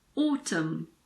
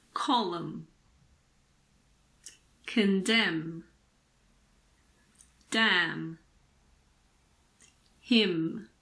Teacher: we don't pronounce n if it comes after M at the end of a word